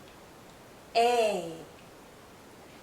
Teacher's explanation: this is a long vowel sound a our mouth is opening more our jaw is lowering a this sound is also tense so you might be seeing